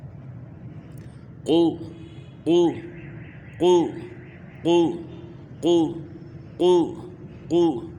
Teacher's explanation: جب ہم اب قاف کو پیش کے ساتھ پڑھیں گے تو ہونٹ پیش کی وجہ سے جو ہے نا گول ہوں گے